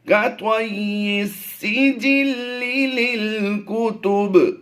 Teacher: यहाँ पर आखिर में हमने कलकलाए सुगरा करना है